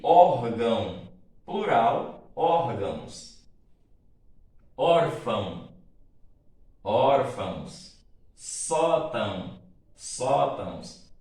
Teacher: o ditongo nasal ão, átono, como eu já falei, aquele que não é tônico, das paroxítonas